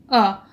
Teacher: आप अ का उच्चारण करके देखिए तो आपका मुंह के अंदर में जीभ का बीच वाला भाग थोड़ा सा धंसा हुआ लगेगा। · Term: मध्य स्वर